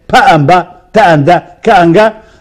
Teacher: If the sound, you have two of them, pa and ba, ta and da, ka and ga, the first one is voiceless, the second one is voiced.